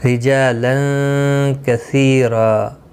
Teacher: رجالا را زیر کی وجہ سے باریک پڑھیں گے.